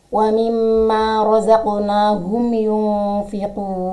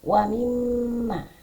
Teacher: Mim bertasydi. Berarti kita harus membacanya dengan ditekan dua harakat pada lafaz wamimma. Waimma harus ditekan dua harakat. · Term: hunah musyaddadah